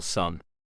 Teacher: N is an alveolar or dental nasal